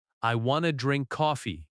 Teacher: I want to becomes I wanna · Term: reduction